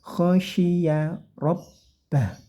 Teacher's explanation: shinnya tebalkan dengan cara desisnya dibanyakin seperti huruf sy